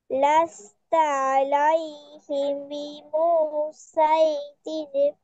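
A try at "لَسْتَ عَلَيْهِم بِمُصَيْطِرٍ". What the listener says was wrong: বিমু টান হয়ে গেছে, বিমুসাইতির।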